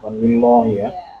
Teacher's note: Huruf lam ini ketika keadaan kasroh, jadi lillahi bacaannya tipis, tidak tebal.